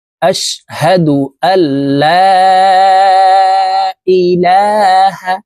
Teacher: লামকে 3 আলিফ টেনে পড়তে হবে। মদের হরফের উপরে চিকন চিহ্ন, বামে হামজা, মধ্যে মুনফাসিল, 3 আলিফ টানিয়া পড়িতে হয়।